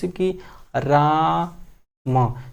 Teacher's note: रा के बाद लंबी सी सांस आ रही है ना, उसी को प्लुत स्वर कहते हैं